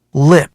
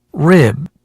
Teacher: 이 두 개의 가장 큰 차이는 혀가 입천장에 닿냐 안 닿냐 요 차이인 것 같아요. 그래서 우리 리을 소리 내고 할 때는 랄랄라 이렇게 내면서 입천장에 보통 많이 닿아요. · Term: R과 L 발음